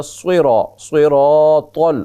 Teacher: صاد کو موٹا پڑھیں گے، را کو بھی موٹا پڑھیں گے، را کے بعد الف بھی موٹا ہوگا۔ صراط، طا بھی موٹی ہوگی، 4 حروف مسلسل موٹے ہوں گے۔